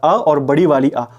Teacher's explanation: अ और बड़ी वाली आ, वो कंठ से बोली जाती है